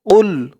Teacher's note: কফের আওয়াজটা মুখ থেকে বের করার সময় গলার ভিতর থেকে ধাক্কা খেয়ে আসবে